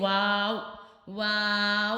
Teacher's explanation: होठों को गोल करने से अदा होगा